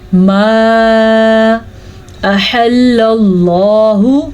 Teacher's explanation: اچھا جی، ماں کے اوپر جو مد آپ کو نظر آ رہی ہے اس مد کی مقدار 2 سے 3 حرکات عربیہ ہے، اس کو لمبا کرنا ہے